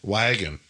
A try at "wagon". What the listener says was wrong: Cuz you said the A like I would say the A, not like a Wisconsinite.